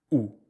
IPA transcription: u